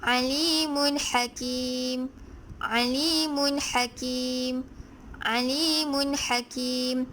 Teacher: apabila tanwin dua baris di hadapan bertemu dengan huruf H, maka ia dibaca jelas